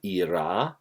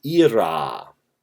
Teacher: the difference is in the quantity of the a short a in the nominative era long and the ablative er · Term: quantity of the vowels